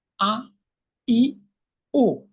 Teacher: হামজা বলবে কণ্ঠনালীর শুরু হতে। যদি জিজ্ঞেস করি তুমি কিভাবে, সেক্ষেত্রে তার উত্তর হবে একটু ধাক্কা দিয়ে ঝটকার সাথে